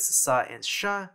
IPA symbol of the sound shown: s ʃ